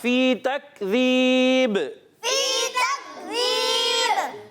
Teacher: با جو ہے حرف قلقلہ سے ہے، قلقلہ آواز لوٹ کر آتی ہے · تکذیب یا مدہ ایک الف کھینچ کر ادا کریں گے، کاف کو باریک رکھنا ہے، زال کی ادائیگی کلیئر رکھنی ہے، زا سے نہیں بدلنا چاہیے